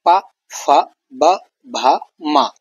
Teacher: ये ओष्ठ यानी होठों के मिलने से ये वर्ण निकलते हैं बाहर इनकी ध्वनि निकलती है। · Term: ओष्ठ वर्ण